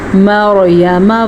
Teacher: را کو پر پڑھیں گے کیونکہ را ساکن سے پیچھے والے حرف پہ زبر ہے